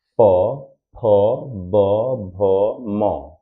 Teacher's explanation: जैसे प तो होठ पूरा सट रहा